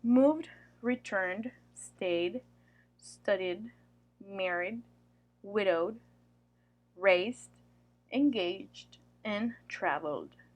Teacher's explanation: a voiced sound then the ETA ending sounds like a D that D is blended together with the previous consonant